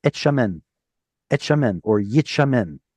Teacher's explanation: Well, if you say that fast enough, et shamen, or yit shamen, the tav gets swallowed up simply because the letter that follows is pronounced in a certain place in the mouth. It's a sibilant.